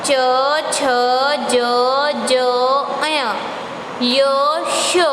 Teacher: तो आप देखोगे कि ये तालु से, हमारे तालु होता है मुंह के ऊपर, उससे आवाज़ हो रही है तालव्य।